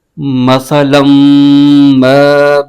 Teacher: لام پر تنوین ہے، 2 زبر ہے، اور آگے میم مشدد حرف ہے، میم مشدد کو لام کے ساتھ ملا کے پڑھیں گے۔ میم مشدد میں ہمیشہ غنہ ہوتا ہے، تو یہاں پر غنہ کر کے پڑھیں گے۔